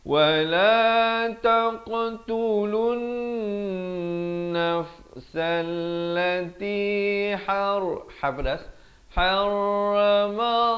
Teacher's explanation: Lafz jalalah dibaca tebal 2 harakat